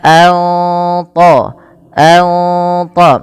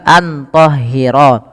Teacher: suara nunnya perlu disamarkan kepada huruf th maka an th an th tidak lagi dibaca antahhiro.